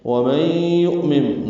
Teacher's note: وَمَن يُؤْمِن حمزہ ساکن جھٹکے سے ہوگا